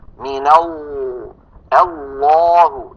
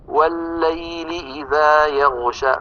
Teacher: يصاحب اللام المفخمة تقعر لوسط اللسان وتضيق في الحلق بخلاف المرققة